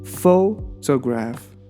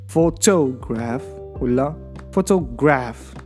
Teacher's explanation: The stress is the first syllable.